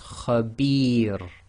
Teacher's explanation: If you have the ra behaving a sakin at the end of a sentence or a stop, and it's preceded by the long vowel kasra ya, it will be light. So this is khabir.